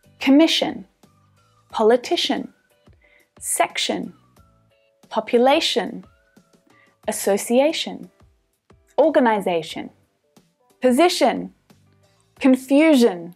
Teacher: I-O or the I-A reduces down to the schwa